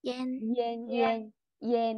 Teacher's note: không đọc hẳn là an, mình sẽ hơi nghiêng về âm E một chút, nó kiểu yen yen yen yen ấy, y n như thế.